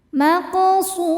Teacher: ra mad-nya ini mad thabi'i muqaddar karena ada ra dengan harakat fathah panjang. Cara bacanya panjang dua harakat. · ra dibaca tafkhim karena berharakat di atas yaitu fathah, dibacanya tebal. Kemudian ra mad-nya ini mad thabi'i muqaddar karena ada ra dengan harakat fathah panjang.